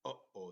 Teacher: the sound comes from the back of the throat, and it's a glottal stop